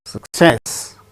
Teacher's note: success with stress on second syllable